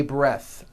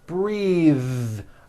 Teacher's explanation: breath is a noun take a breath unvoiced but when you change it into a verb the vowel changes and it becomes breathe